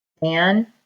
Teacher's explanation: Now we don't say vandal, we say vandal. So that first syllable takes the accent.